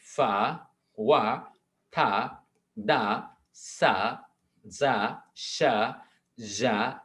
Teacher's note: involves almost blocking the air stream and having air push through the very narrow opening. थोड़ा सा उनको खोल के हम क्या करते हैं, एयर को पुश करते हैं, और हम क्या करते हैं, सबसे पहले हम क्या करते हैं, एयर को ब्लॉक करते हैं, ब्लॉक करने के बाद हम फिर उसको पुश करते हैं, ये और ये साउंड बनता है। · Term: फ्रीकेटिव